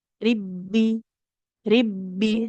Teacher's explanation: Kalau huruf ba ini karena dia tahan aliran suara sehingga penekanan di makhrajnya lebih kuat. Ribbi. Ribbi sehingga suara itu tidak mengalir lagi.